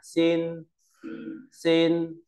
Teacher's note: Tiếp theo là phần thanh điệu, thì nét ngang như đầu chữ y là thanh điệu thanh một. Khi đọc thanh một ta lưu ý đọc cao và ngang